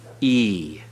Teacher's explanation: When you have the hirek yod, it is the long sound always, as in machine